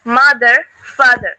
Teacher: In USA pronunciation, R sound is always pronounced clearly.